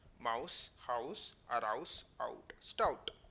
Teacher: Now the vowels I and OU are called diphthongs because they are actually 2 vowels in succession.